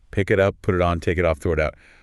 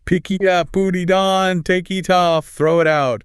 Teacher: Link every single end consonant to the next vowel. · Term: consonant to vowel linking